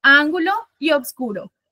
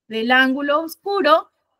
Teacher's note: debe unir en una sola sílaba dos vocales que una se encuentra al final de la palabra y el otro al principio de la otra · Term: sinalefa